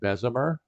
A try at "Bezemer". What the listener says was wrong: Bezemer is the more Dutch pronunciation. but with like an A as in just the letter A and not an E.